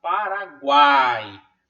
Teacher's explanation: na Fala você tem uma vogal entre duas semivogais ou seja quando você pronuncia a palavra Paraguai e se a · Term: tritongos